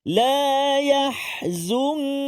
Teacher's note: dengung pada nun mati bertemu dengan kaf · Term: ikhfa haqiqi